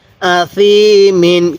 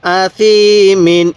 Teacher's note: আর এই তানবিনগুলো স্পষ্ট করে পড়ব, কারণ এই তানবিনের পরে যদি ইজহারের 6টি হরফ থেকে কোনো একটি হরফ থাকে তাহলে ওই তানবিনটি আমরা স্পষ্ট করে পড়ব। তাহলে এখানে তানবিনের পরে এই ইজহারের একটি হরফ হামজা, এই জন্য আমরা এই তানবিনটিকে স্পষ্ট করে পড়ব।